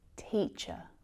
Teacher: This is our relaxed, lazy schwa sound. We really need to relax our jaw.